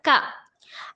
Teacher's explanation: کاف زبان کے جڑ سے ادا ہوتا ہے، کاف پر زبر ہے نہیں کھینچیں گے، کاف زبر کا۔